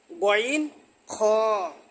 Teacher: মাকরাস হলকের শেষ ভাগ হইতে